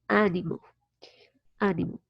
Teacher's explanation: the stress is in the first syllable, and the vowel is pronounced animal. So it's an open a. When you see this sound, is because the vowel, you need to open your mouth a lot to pronounce that vowel.